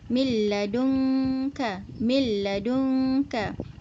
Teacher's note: Dia masuk secara keseluruhan. Nun tu masuk ke dalam lam, dan lam kita hanya baca lam sahaja. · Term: idghaman kamilan